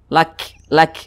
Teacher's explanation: huruf kaf kalau dia sukun itu ada hembusan angin yang berdesis daripada mulut kita yang keluar. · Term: sifat hamas